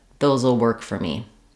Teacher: even though we have no written contraction for those will, in connected speech, we tend to contract this.